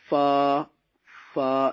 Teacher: اس کا مخرج یہ ہے کہ ثنائے علیہ فرنٹ ٹیتھ جو ہے وہ آپ کے سامنے والے 2 دانتوں کا نچلا کنارہ اور نیچے والے ہونٹ کا تر حصہ، نیچے والے ہونٹ کا تر حصہ اور اوپر والے 2 دانتوں کا نچلا کنارہ